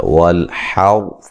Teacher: حا کو جو ہے وہ اس کے مخرج سے ادا کرنا ہے، را کو موٹا ادا کرنا ہے، را ساکن سے پہلے زبر ہے، ٹھیک ہے جی۔